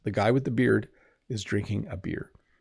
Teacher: When we speak quickly though, you might not quite hear the D at the end. Sometimes we forget to pronounce it a little bit.